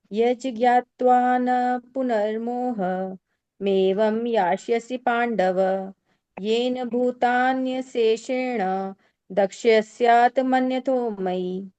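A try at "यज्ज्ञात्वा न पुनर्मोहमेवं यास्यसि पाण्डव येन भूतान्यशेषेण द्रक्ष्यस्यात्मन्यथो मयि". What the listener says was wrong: ठीक है, अच्छा है।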